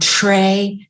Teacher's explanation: and tray is affricated again